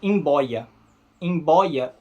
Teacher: o b ele até pode ser bilabial né com esse som de B Mas só quando ele tiver um m antes dele